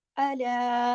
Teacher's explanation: अला के ऊपर खड़ी जबर भी है और तवस्सुत वाली मद भी यहाँ मौजूद है